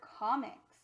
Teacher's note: if you hear the word comics, you'll hear that the M actually sounds like it's with the second syllable.